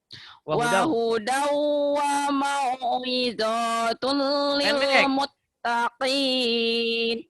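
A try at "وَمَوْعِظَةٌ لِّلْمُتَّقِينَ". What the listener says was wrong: Wahudau wa mau'izatul lil muttaqin. Pendek wa mau'izatulnya nggak ada yang panjang ya. Mau naon mau. Jangan panjang kan. Wa mau.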